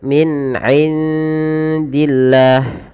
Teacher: Perjelas bunyi nun ketika bertemu dengan huruf 'ain karena ini adalah bacaan izhar, yang berarti jelas.